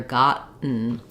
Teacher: So I go to the T, got. I don't release it. I don't do got, but rather gotten.